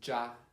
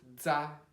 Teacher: So this is za, this is ja. So the ZH is the J sound, and the ZA is the DZ sound